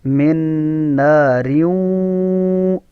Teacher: یا نون تنوین کے بعد دیکھیں حروف یرملون میں سے واو آ گیا نا، تو یہاں ادغام کریں گے، یعنی پوری آواز ناک میں چھپے گی